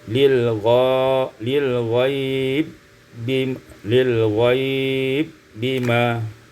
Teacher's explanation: Kemudian ayat 24, lil ghaibi bima, idghamul ba fil ba, diidghamkan ba pada ba menjadi lil ghaib bima.